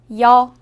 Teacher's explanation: 여는 먼저 이를 소리 내다가 바로 이어서 어를 소리 내며 발음합니다. 이와 어를 순서대로 빠르게 말해요.